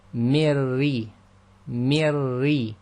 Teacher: So the ra which is sakin must join to a sound before, and the only sound we've got before is the mim with the kasra, because the noon in the min is actually sakin as well. So you join the mi sound directly to the ra which is sakin. So essentially we have the sound of mirri, mirri, and we've got the double up sound.